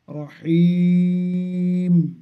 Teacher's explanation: র এর উপরে জাবার থাকার কারণে র মোটা